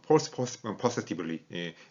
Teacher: 이걸 빨리 발음하다 보면 폴스 퍼세티블리 뭐 이런 식으로 지가 스로 바뀌는 그런 그 현상이 있을 수가 있었습니다